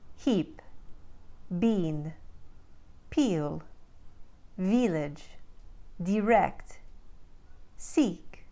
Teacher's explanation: the crisp I vow sound found in words like fit and crisp becomes a pure vow e in the Ukraine accent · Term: I 2 e